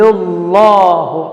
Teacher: یضل اللہ، اللہ تفخیم کے ساتھ ہے